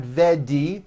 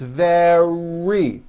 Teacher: make sure that the r sound is strong and your lips are coming forward your tongue is back and you push out the r very like that practice these sentences with me nice and slow · the r occurs in the middle of the word it's not a D sound the word is not vedi or verni it's very make sure